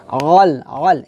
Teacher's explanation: আইন উচ্চারণটা কি হবে, হলকের মধ্যখান থেকে আমরা চাপ দিয়ে উচ্চারণ করব